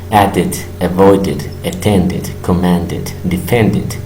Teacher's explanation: como terminen en una D en presente, lo vamos a pronunciar como it.